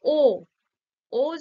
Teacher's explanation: ও যখন উচ্চারণ করছি ঠোঁটটা কি হচ্ছে কুচকে যাচ্ছে অর্থাৎ কুঞ্চিত হচ্ছে তাই ও কুঞ্চিত স্বরধ্বনি এরপর আসছে জীভের আকার বা জীভের অবস্থান